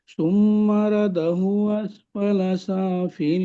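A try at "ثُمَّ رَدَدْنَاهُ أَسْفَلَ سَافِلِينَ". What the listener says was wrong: আয়াতটি সুম্মা রাদাদনা, একটা দাল ছেড়ে যাচ্ছে, চলেন। হু হু হু ছেড়ে যাচ্ছে। সুম্মা রাদাদনাহু আসফালা সাফিলিন।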